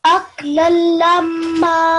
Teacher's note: you need to make the meme a nasal sound as well because it has a shadda